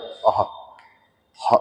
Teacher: और ये हा एक कंठ है, हा की आवाज कंठ आती है, जो आहा, जो हा विसर्ग होता है वो कंठी होता है, ये विसर्ग भी कंठी होता है।